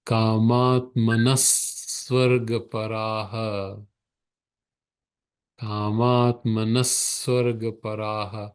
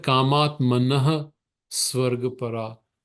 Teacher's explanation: So here the Visarga becomes a sa sound.